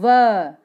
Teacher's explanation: देखिए बोल के देखिए आप, व। अपने दांत जो हैं वो होठों को टच कर रहे हैं, व, है ना। नीचे वाले दांत और ऊपर वाला होंठ आपस में टच हो रहा है। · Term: दंतोष्ठ